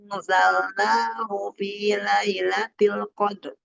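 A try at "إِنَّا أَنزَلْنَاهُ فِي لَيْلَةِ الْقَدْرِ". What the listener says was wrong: Dan naknya tadi kepanjangan ada sampai 6. Harusnya 4 naknya. 6, 4 aja. Bukan yang naknya. Tadi Ibu 6 kebanyakan. Tadi banyak banget. Harusnya gini aja. Inna anzalnahu fi lailatul qadar.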